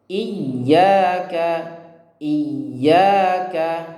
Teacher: huruf hamzah berharokat kasroh, setelahnya huruf ya yang tasydid, bertasydid, maka ditekan membaca ya-nya. Iyyaka, karena ingat huruf yang bertasydid itu sebenarnya terdiri dari dua huruf.